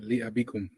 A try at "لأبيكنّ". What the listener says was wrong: But some of the words you lose the mud. You say abikunna, it's abikunna. When you say yazuruna, it's yazuruna. Don't lose the mud. Abikunna.